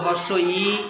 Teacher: আমি যখন উচ্চারণ করব হর্ষ ই প্রসারিত হচ্ছে, টান পড়ছে